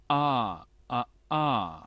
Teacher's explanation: Es como una H, pero como cortada. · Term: glottal stop